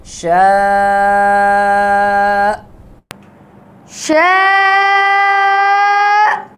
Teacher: حمزہ کی آواز آئے گی جھٹکے کی، اگر ہم حمزہ کی جھٹکے کی آواز پیدا نہیں کریں گے تو حمزہ حذف ہو جائے گا اور یہ لحن جلی ہے، بڑی غلطی ہے۔